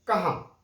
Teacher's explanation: कहां कहां आ, देखिए आ मुंह से भी आवाज निकल रही है और नाक से भी आवाज निकल रही है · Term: चंद्र बिंदु